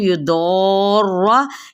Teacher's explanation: युदौर यहाँ पे 4 हरकत लंबा करते हुए इसको रॉ के साथ मिलाएंगे और रॉ को पुर पढ़ेंगे, ठीक है।